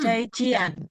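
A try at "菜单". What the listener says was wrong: Nah, IAN dia dibaca ien, jadi cai cien. Jadi satu paket yang kalau dia belakangnya tuh IAN bacanya ien.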